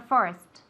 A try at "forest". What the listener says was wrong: There's a T, okay?